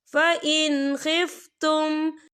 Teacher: नून साकिन के बाद जो है खा आ रहा है, और खा जो है हरूफ हल्की का वर्ड है, तो हम यहाँ इजहार करेंगे और हम इसे बिना गुन्ने के पढ़ेंगे